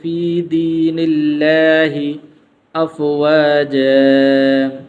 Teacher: اور اسی طرح یہاں پر یہ ہے دین اللہ، تو یہاں پر لفظ اللہ سے پہلے زیر موجود ہے، تو اس لیے یہاں پر اس کو پر نہیں پڑھیں گے، موٹا کر کے نہیں پڑھیں گے، بلکہ اس کو باریک پڑھیں گے